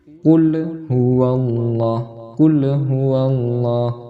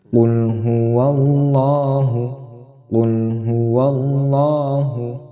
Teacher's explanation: Pelafalan huruf lam di sini itu tidak boleh dibaca dengan qalqalah atau memantul